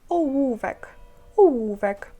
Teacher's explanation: зводячи губи в трубочку, а в прикладаючи верхні зуби до нижньої губи